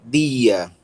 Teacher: O delta tem som de D, tá? Sempre o D conforme pronunciado em Pernambuco e no Rio Grande do Norte, né? E em alguns outros estados do Nordeste também, tá?